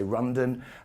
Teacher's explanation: If somebody from Japan comes across to London, they don't say the L, they say Rundon. And no matter how much you try and teach them the L sound, they can't pick up the L sound.